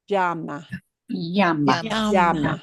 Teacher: My variation has a teeny tiny, and I mean really tiny twist of a j in front of that Y sound.